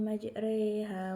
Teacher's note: Yang ketiga yaitu imalah majriha. Ro dibaca imalah atau condong, yaitu membaca antara harokat fathah dan kasroh